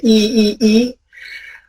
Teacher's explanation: So if you produce something like an E vowel, it's here. The blade of your tongue is raised, or even the tip of the tongue is raised.